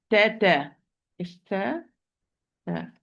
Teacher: Ta, my dear sister, always is lowered, mustafil, and as a result of this, it's light, muraqqaq.